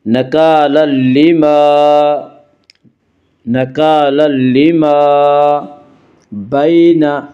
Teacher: یہاں تنوین کے بعد لام اور اس لیے یہاں پہ ادغام بلا غنہ ہوگا۔ · یالین وہ یا جو ساکن ہو، اس سے پہلے زبر ہو، یالین کو نرم آواز کے ساتھ جلدی پڑھیں گی